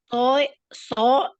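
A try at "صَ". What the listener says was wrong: Tebal ya jadinya. Jadi bukan cuma so. Beda ya. ya ini beda ya, bunyinya itu beda. Yang pertama itu kedengarannya so bener ya, S dan O so Jadi yang kedua itu tebelnya karena apa namanya, lidah kita itu naik ke langit-langit ya.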